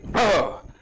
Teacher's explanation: ह या वर्णाचा उच्चार करताना हवा फुफ्फुसाद्वारे बाहेर टाकली जाते, म्हणून ह ला महाप्राण